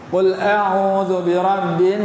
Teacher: Pada perkataan nas itu nun yang bersyaddah. Nun yang bersyaddah, mim yang bersyaddah kena dengung 2 harakat.